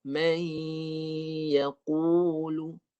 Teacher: Dengungnya dia menggunakan sebahagian rongga hidung. Sebahagian saja. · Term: mudghamah